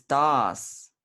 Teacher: And the visarga changes to S because it's followed by T.